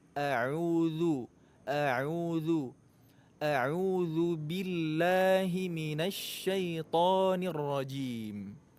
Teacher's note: Huruf zal makhrajnya ujung lidah dengan ujung gigi seri atas.